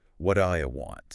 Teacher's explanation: All the energy is on want.